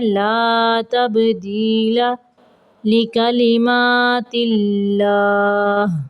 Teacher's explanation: با کو قلقلہ کرنا ہے